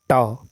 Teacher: मुर्धन्य अल्पप्राण अघोष व्यंजन वर्ण का जो उदाहरण है यह है ट